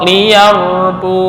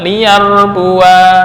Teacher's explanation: menetapkan Alif secara tulisan tulisannya kelihatan tapi secara pengucapan Alif tersebut dibuang baik dalam keadaan wasal maupun waqaf